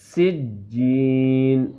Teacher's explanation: سین کی آواز سیٹی کی طرح نکلے گی سختی سے